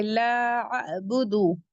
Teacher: لا یہاں پھر مد منفصل آ رہا ہے، 4 to 5 کاؤنٹ elongate کریں گے کیونکہ حمزہ دوسرے کلمے میں آ رہا ہے